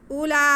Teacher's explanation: حمزہ کے بعد ہم نے لام کو ہی پڑھنا ہے، اور لام پہ کھڑا زبر ہے۔ اولا، کھڑا زبر ہم ایک الف کے برابر کھینچیں گے، کیونکہ یہ الف مدہ کے قائم مقام ہوتا ہے۔